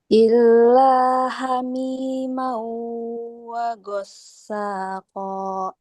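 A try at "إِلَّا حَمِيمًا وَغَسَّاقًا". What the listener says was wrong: Kita halusin lagi ghainnya. Lembutin dikit lagi. Mas lembut ya, enggak bulat gos gitu. Gos, tapi enggak gos tapi gos. Iya, ghain, bukan goin tapi ghain.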